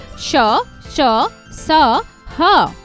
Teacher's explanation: ऐसे व्यंजन जिनके उच्चारण में मुंह से रगड़ खाने के पश्चात वायु में गर्मी सी ऊष्मा उत्पन्न होती है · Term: ऊष्म व्यंजन